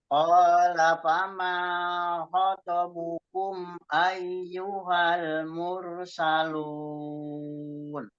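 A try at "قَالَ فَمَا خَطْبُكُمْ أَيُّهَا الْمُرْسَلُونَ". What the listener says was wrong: Ya, hati-hati ya dia to yang khoto. Ai-nya dipertegas lagi.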